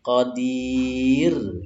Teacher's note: Qadir itu ada ro sukun, sebelumnya ada kasroh, ro-nya sifatnya tipis. Qadir gitu ya, sambil tersenyum.